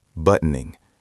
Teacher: The T is often swallowed in rapid speech.